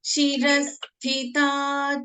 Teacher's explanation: Next line, listen once. Shirasthita, tha is a Mahaprana.